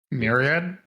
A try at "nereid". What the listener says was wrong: No, with an N. With an N. Nereid.